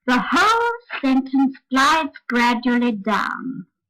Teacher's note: when the voice rises in the middle of the sentence it doesn't go up as high as the first stressed syllable oh no it's only quite a small rise and you mustn't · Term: interrupted Glide down